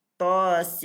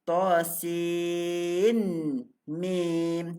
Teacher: Mulut kita terbuka sebab huruf nun sin. Tapi kalau kita dah masukkan pada huruf mim, bunyinya sim. Rapatkan bibir kita. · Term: idgham